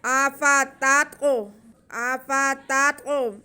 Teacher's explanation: افتطمعون، طا ساکن ہے اور تا حرف اگر ساکن ہو تو اس پہ قلقلہ ہوتا ہے، تو یہاں پہ ہم طا پہ قلقلہ کریں گے، یعنی کہ طا کی آواز کو واضح کر کے پڑھیں گے